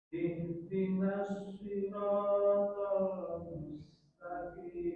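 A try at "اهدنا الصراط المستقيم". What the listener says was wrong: Coba haknya dialirkan lagi karena hak punya sifat rokhawah. Ihdina.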